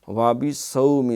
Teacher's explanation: صاد موٹا ہے، وَبِصَوْم سین نہ بن جائے